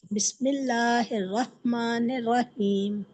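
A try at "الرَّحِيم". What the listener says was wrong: रहीम में बड़ी हा है ना, रहमानिर्रहीम। रहीम रहीम। रा को मोटा पढ़ेंगे, रहीम।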